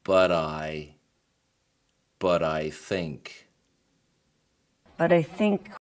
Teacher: 但 是 当 语 速 变 快， 很 多 人 会 选 择 将 两 个 词 连 读， 用 flap T 的 方 式 来 处 理 中 间 的 字 母 T